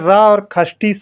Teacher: र और खटी सा ये दोनों ही आपके मूर्धा से उच्चारित होते हैं